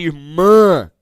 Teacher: então a vogal ela terá um som nasal